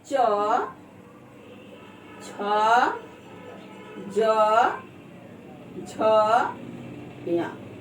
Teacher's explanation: इसका उच्चारण स्थान तालु है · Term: चवर्ग